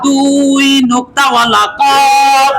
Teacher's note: চার নাম্বার মাখরজ জিহ্বার গোড়া তার বরাবর উপরের তালুর সঙ্গে লাগাইয়া দুই নোক্তাওয়ালা কফ